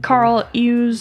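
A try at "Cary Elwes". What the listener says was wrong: It's not Carl, though. Carrie Elwes. I heard somebody pronounce it Elwes. I don't even know now. I don't know what's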